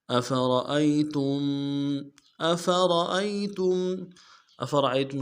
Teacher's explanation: أفرأيتم حمزہ کو بھی، فا کو بھی، را کو بھی، را کو موٹا کریں گے، باقی حمزہ اور فا کو نرم سے ادا کریں گے. حمزہ کو یا کے سامنے لانا ہے، یا لین بغیر کھینچے پڑیں گے